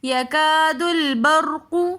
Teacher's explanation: الف مدہ کی وجہ سے ہم یکادو تھوڑا سا کھینچ کر پڑھ رہے ہیں۔ آگے لام ساکن ہے تو دال کو لام کے ساتھ ملا کر پڑھیں گے۔